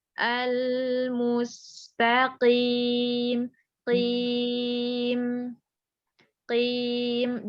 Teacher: Kemudian kalau qaf itu punya sifatnya infitah, bukan itbaq. Artinya qaf itu tebelnya level 2. Jadi nggak setebal huruf shad sama to. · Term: huruf qaf